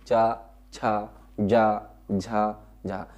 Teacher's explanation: तो चा जब बोलेंगे तो जबान कहां टकराती है, तालू में, तो इसका उच्चारण स्थान क्या हो गया, तालू